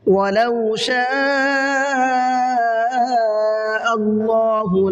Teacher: اللہ کے لام کو منہ بھر کے پڑھنا ہے، اس لیے کہ اللہ کے لام سے پہلے زبر ہے